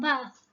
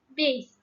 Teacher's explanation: However, there are cases where no affix is added but are derived by having some vowel change as well as replacing the voiceless consonant in noun to a voiced one